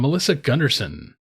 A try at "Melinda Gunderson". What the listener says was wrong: Melinda. that's close. It says Melinda, not Melissa.